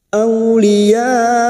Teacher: Ciri-ciri hamzah yang seperti ini disebut dengan mat wajib mutasil. Bertemunya mat dengan hamzah dalam satu kalimat. 5 harakat kita panjangkan.